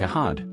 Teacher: when an R comes before a consonant or at the end of a word, the sound is dropped.